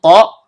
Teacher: ujung lidah bertemu dengan pangkal gigi seri atas. Karena to-nya berharokat sukun dan berada di antara 2 huruf hidup, maka hukum bacaannya qalqalah sugro, bunyi pantulannya kecil.